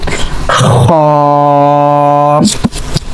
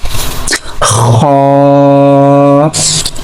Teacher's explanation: So for pronouncing Kha we are using our upper part of throat.